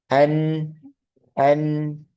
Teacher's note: Nah, nah, untuk sifatnya sama. Nun juga alirannya tengah-tengah antara syiddah dan rokhawah. Jadi tengah-tengah, pertengahan. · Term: bainnya